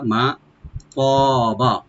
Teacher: মা, মা মানে হলো এখানে যা, মা যা বা যেটা, মিম ওপেন রেখে একালিফ টানবো আমরা। মা তবা, তটাকে ডিপ করে একালিফ টানবো, আর বাতে কোনো টান নাই, লাস্টে বাতে কোনো টানবেন না।